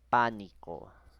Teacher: Lleva la mayor fuerza de voz en la antepenúltima sílaba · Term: esdrújula